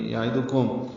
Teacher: عین وسط حلق سے نکالیں گے، دال کاف باریک ہے، میم ساکن پہ اظہار شفوی ہے.